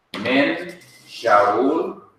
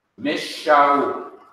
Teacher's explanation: To compensate for the loss of a letter, the letter that comes right after, which is Shin, has to be doubled or repeated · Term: Daghesh Forte compensative